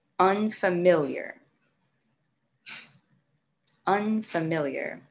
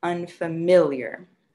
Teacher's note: word how many syllables unfamiliar unfamiliar you should have four unfamiliar so four syllables and the stress is on the third syllable